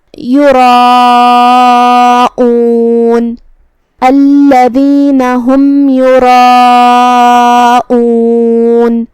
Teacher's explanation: کلمت یراؤون میں یہاں را پہ زبر ہے، لہذا را کا حکم ہے تفخیم، ہم را کو بھاری آواز میں پڑھیں گے۔ پھر اس کے بعد مد آتا ہے، یہاں مد واجب متصل ہے۔